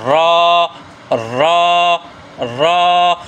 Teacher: تو را کا مخرج یہ ہے، آپ دیکھ رہے ہیں یہ زبان کی پشت جو ہے، زبان کی پشت رأس اللسان، یعنی زبان کی پشت، یہ اوپر والے ثنایا علیہ دونوں دانتوں کے اوپر جو تالو کا حصہ ہے نا، وہاں زبان لگے۔ یہ آپ کو میں نے یہ بلو کلر کا نشان نظر آ رہا ہے، مقابل کا تالو، یہ یہاں را ادا ہوتی ہے۔